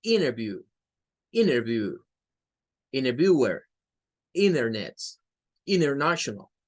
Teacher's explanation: Algunos la pronuncian más como la D, otros la pronuncian más como una E. Pero cuando la N y la T está en alguna palabra, N delante de T, el norteamericano promedio tiende a eliminar el sonido de la T.